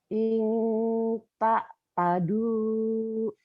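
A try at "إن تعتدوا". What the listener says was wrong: An bukan in Bu. Ta'tadu. Ta'tadu.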